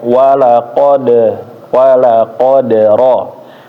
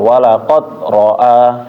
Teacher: Terus huruf dal. Huruf dal juga dipantul ya.